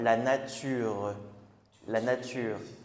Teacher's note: Le son e, on va comme l'entendre un tout petit peu à la fin